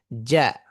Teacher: জিম এই হারফটি যখন উচ্চারিত হবে তখন জিহ্বার মধ্যভাগ এবং মুখের তালুর মধ্যভাগ পুরোপুরি লেগে থাকবে